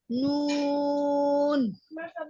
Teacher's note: জিহ্বার আগা তার বরাবর উপরের তালুর সঙ্গে লাগিয়ে